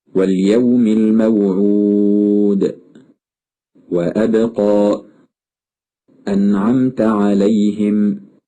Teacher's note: هذه الحروف تخرج من بين الشفتين، ولذلك تسمى بالحروف الشفوية، مع ملاحظة أن الواو ينبغي ألا تكون حرف مد، فإن أتت الواو حرف مد فإن مخرجها يكون من الجوف.